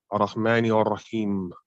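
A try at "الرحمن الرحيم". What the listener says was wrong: So not ara, ar-rah.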